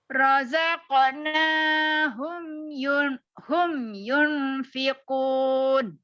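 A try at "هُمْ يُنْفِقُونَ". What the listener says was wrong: Yunnya yang dilamain. Hum yunfiqun. Coba dari hum.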